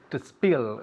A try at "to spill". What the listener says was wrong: Very good. To spill. Very good pronunciation.